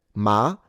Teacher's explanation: Ma and then it goes up. Ma ma very quickly all the way up to a high pitch. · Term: Second tone